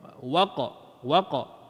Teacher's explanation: Serupa juga dengan huruf gap lagi bunyi qalqalah. Huruf qaf sama kita angkat pangkal lidah waqa waqa kalau letak tak lepas maka dia jadi huruf yang tak tak ada qalqalah waq.